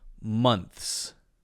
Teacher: so what you're doing there is sliding it back from the th sound directly to the S sound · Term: unvoiced th sound